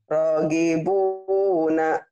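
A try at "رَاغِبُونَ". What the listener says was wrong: Kenapa Ibu ronya panjang? Ini alif ya berdiri, Bu. Kalau alif duduk.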